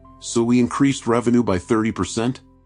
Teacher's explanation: One of the most damaging habits a speaker can have is called upspeak, ending declarative sentences with a rising inflection as if every statement is actually a question